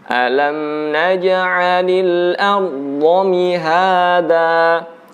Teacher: Huruf jim itu diucapkan tanpa ada udara yang keluar, ya. Jadi yang baca naje itu masih pecah, ada udara yang keluar.